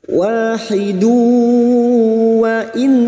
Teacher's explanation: Karena di sini kita wasal atau terus, maka dhamma tanwin siap masuk ke huruf wawu dan mendengung selama 3 harakat. Wahidu wa in.